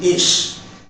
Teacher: Ish is produced by raising the front tongue towards the hard palate and narrowing the tongue between the tip of the tongue and the back of the alveolar ridge and causing the friction there.